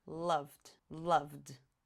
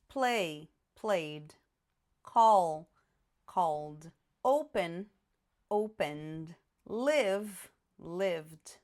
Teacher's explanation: quando eu colocar o ed, esse ed vai ser pronunciado como se a palavra terminasse só com d. Eu não vou falar ed, eu vou falar só o d.